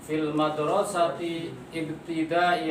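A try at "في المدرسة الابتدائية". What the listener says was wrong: Madrasati atau madrasatil? Iya, ini alif lam ya, dihambal langsung. Fil madrasatil ibtidaiyati asan.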